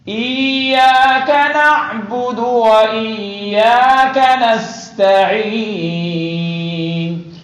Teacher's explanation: سین باریک ہو اور عین واضح ہو، اور حمزی ابھی بھی درست نہیں ہے.